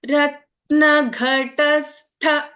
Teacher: ಘ is A ಮಹಾಪ್ರಾಣ ಟ is ಆನ್ ಅಲ್ಪ ಪ್ರಾಣ ಅಂಡ್ ಅಗೈನ್ ಥ ಇಸ್ ಎ ಮಹಾಪ್ರಾಣ · here gha is a mahaprana, ta is an alpa prana, and again tha is a mahaprana.